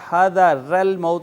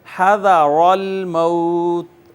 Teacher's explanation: حذر الموت، آپ یہ توجہ کریں کہ را جو ہے، را کے اوپر زبر ہے، را مفتوح ہے، لہٰذا اس را کو پر کر کے پڑھیں گے